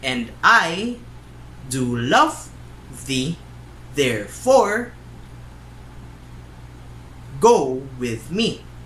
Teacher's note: unstressed stressed unstressed stressed